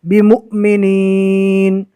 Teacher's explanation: حمزہ آ گیا، اس کے اوپر جزم ہے، پہلے والے حرف سے ملا کر جھٹکا دے کر پڑھنا ہے